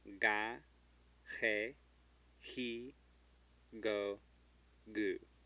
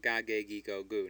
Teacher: The G before the E and the I's make ch sounds.